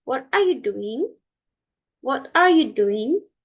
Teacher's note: in open questions the tone at the end of the of the sentence are a drop or a fall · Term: following inations